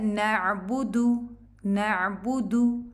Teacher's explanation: दू लंबा नहीं करना, इसको 1 काउंट है